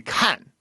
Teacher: So like he wants to turn fourth tone into a first tone, which is a surprisingly common mistake because I guess it's because fourth tone starts at a similar starting point to first tone. It just falls from there. And it's almost like people never get to the falling part.